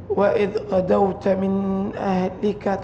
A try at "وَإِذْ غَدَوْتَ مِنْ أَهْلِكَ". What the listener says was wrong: بدون غنة وإذ غدوت من أهلك